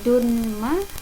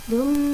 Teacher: Bacanya yaitu dumma, gitu ya. Dumma, dengung dan masuk ke huruf berikutnya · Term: idgham bi gunnah